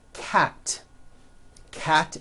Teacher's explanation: cat ends with an unvoiced T